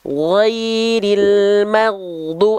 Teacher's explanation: Rasakan ada getaran suara dari ujung tenggorokan kita nih, berbatasan dengan lidah.